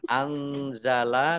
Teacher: nun sukun bertemu dengan huruf Za bacaan Ikhfa samar-samar